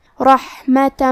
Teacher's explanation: کلمت رحمہ میں را کو موٹی آواز میں پڑھیں گے، آخر میں تا پہ تنوین زبر ہے، پھر حرف المیم ہے کلمت من، میم حروف الادغام بغنہ میں سے ہے تو ہم یہ حکم کو غنہ اور تشدید کے ساتھ ادا کریں گے